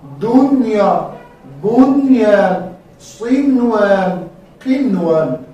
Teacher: نون صفتش در خیشوم ادا می شود که غنه است، از خیشوم بیرون می شود که غنه است. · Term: ناقص غنه